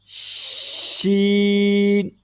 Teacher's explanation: زبان کا درمیان والا حصہ بالمقابل سیدھا اوپر تالو کے ساتھ لگتا ہے تو اس سے شین ادا ہوتا ہے